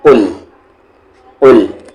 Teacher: قاف ہیوی ہے، لام ہیوی نہیں ہے، لام کو آپ کو بالکل لائٹ رکھنا ہے